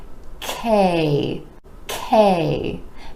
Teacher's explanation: now the consonant is an air puff sound meaning it's made with a tiny puff of air and you want to make sure that ke gets the puff · the consonant sound where the back of the tongue is rising up towards the palate ke ke now the consonant is an air puff sound meaning